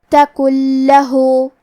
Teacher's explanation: کلمت لہو کے آخری میں ہا پہ الٹا پیش ہے، یہاں بھی مد صلہ صغرا ہے، تو ہم اپنی آواز 2 مد کے برابر لمبی کریں گے